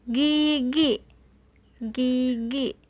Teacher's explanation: I pada suku kata terbuka itu bunyinya tinggi, sedangkan pada I dengan suku kata tertutup itu dibacanya rendah.